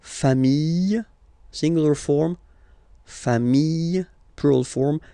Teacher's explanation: Final s not pronounced. Fami singular form fami plural form same pronunciation s not pronounced.